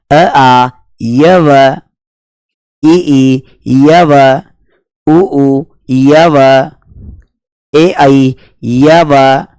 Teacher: और ये य और व है इनका उच्चारण भी स्वरों के समान हो रहा है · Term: अर्ध स्वर